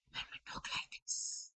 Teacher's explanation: we are actually closing the vocal cords and only separating the arytenoid cartilage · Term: whispering